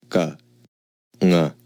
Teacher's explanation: To produce these sounds, we stop the air at the soft palate. To stop the air, we use the base of the tongue. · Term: Soft palate consonants